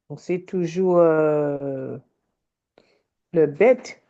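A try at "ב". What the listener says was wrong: Oui, alors, comme il n'y a pas de point, c'est un vet. Ça se prononce V.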